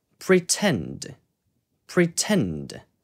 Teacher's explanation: 강세가 T에 있을 때 명확하게 T 발음을 해줍니다. 왜냐하면 강세를 살려야 되니까 이 T 소리도 살아야 되겠죠.